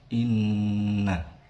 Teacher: terdapat hukum bacaan gunnah karena ada nun bertasydid. Cara membacanya ditahan sepanjang 2 harokat